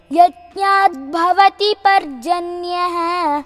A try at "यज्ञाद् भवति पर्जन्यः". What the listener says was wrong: Here also it is not actually यज्ञात् plus bhavati becomes यज्ञाद् भवति the okay. यज्ञाद् भवति पर्जन्यः